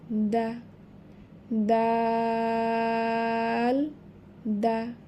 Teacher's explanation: তাহলে এই হরফটি চার আলিফ টেনে পড়তে হবে নাম বানান করে পড়লে এবং এর মাখরাজ হচ্ছে উপরের জিহবার আগা উপরের সামনের উপরের দুই দাঁতের গোড়ার সাথে লাগাইয়া উচ্চারণ করতে হবে। এবং এটি হচ্ছে পাতলা হরফ।